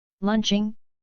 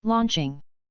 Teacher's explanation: ambas suenan prácticamente desde la misma posición, con la única diferencia de que al pronunciar la O se redondean un poco los labios. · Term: O medio abierta